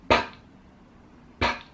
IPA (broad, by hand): p